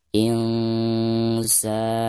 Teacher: Catatan Insa: nun sukun atau nun mati diikuti oleh salah satu huruf ikhfa, di sini huruf sin. Jadi, bunyi nun sukun itu harus dikaburkan, disertai dengan bunyi sengau.